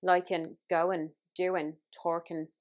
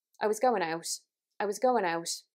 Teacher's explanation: have time to mention earlier in the consonants this is that the final g gets dropped so in words where you've got an ing we're not saying we're just literally saying n liking going doing talking you're dropping that g sound I was